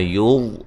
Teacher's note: وا کو خوب موٹا کریں گے